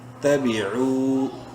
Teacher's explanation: واو مدہ ہے، عین کو ایک الف برابر لمبا کریں گے